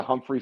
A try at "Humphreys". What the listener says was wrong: You said it wrong. It's Humphreys. The S, Humphreys.